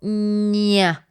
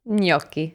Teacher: So it's a nasal palatal. So the tongue is really squeezed on the palate.